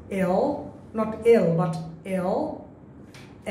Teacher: Lটা বললে আমি একটু জিহ্বাটা ভিতরে নিয়ে নিয়েছি